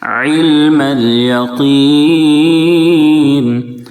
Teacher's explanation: تعلمون علم الیقین، علم عین کو درمیانی حلق سے ادا کریں، عین کے نیچے زیر ہے، اس کو واضح کریں گے۔ علم الیقین قاف کے نیچے بھلے ہی زیر ہے لیکن اس کے باوجود بھی قاف کو پر پڑھیں گے، کیونکہ قاف ان حروف میں سے ہے جو ہمیشہ پر پڑھے جاتے ہیں۔